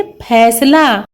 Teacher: इस फ को बोलने में हमें ऊपर और नीचे दोनों होठों को चिपकाकर फ बोलेंगे तो इसका उच्चारण सही होगा। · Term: पूरा फ